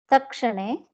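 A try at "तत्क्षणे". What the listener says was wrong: Tat kshane. Takara has to be heard. Tat kshane. Tat kshane.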